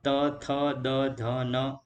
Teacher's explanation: જે વ્યંજનોનું ઉચ્ચારણ કરતી વખતે જીભ દાંતને સ્પર્શે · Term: દંત્ય વ્યંજનો